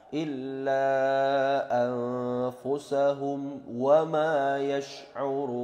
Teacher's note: Illa itu panjangnya bisa 2, 4 sampai 5. Kemudian ada nun mati bertemu fa, yaitu ikhfa haqiqi, mendengung samar-samar 2 harokat